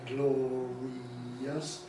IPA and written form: ˡglɒriːəs (glorious)